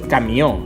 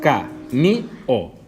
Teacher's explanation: Les paraules, segons on tinguen la síl·laba tònica, poden ser agudes, com podeu veure, camió. Si camió la dividim sil·làbicament, podem veure que, diguem camió, sona més la última síl·laba